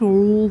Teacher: رو کے اوپر پیش تھا نا تو رو کو ہم نے پر کیا